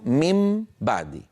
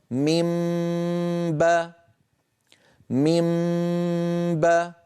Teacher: قلنا بأن إذا أتى نون ساكنة بعدها باء فإن الإنسان بفطرته يقلب النون إلى ميم، فيصير مثلا من بعدي، هذا الأصل، يصير ميم بعدي، فميم آخرها شفتان منطبقتان، بعدي بدايتها شفتان منطبقتان، فلو وضعنا هذه إلى جنب هذه تصير ميم باء، ميم نطبق الشفتين باء، وتأتي الغنة الممطوطة ميم باء ميم باء. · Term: القلب